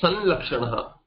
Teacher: lakara becomes nasalized instead of the anuswara